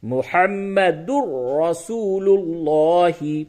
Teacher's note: जैसे कलमा आप पढ़ते हैं तो उसमें पढ़ते हैं मोहम्मदुर दाल को रा से मिला दिया दाल के ऊपर दो पेश है मोहम्मदुन है मोहम्मदुन और उसके बाद रसूल्लाह तो रा दाल को रा से इदगाम किया क्योंकि दाल के ऊपर तनवीन है तो इदगाम बिला गुना हुआ · دال کو را سے ادغام کیا، کیونکہ دال کے اوپر تنوین ہے تو ادغام بلا غنہ ہوا